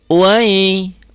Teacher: Fathah dengan ya enggak pasangan, enggak jadi panjang. Wai diptong.